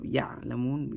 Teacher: When the ayn has a sukun, or ayn or ayn have a sukun, you drag the sound, you let the sound echo. You don't just stop ya'lamun, you let the sound drag the ayn sound.